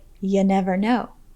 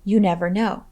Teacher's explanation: in more casual settings, you might hear someone pronounce the word you as ya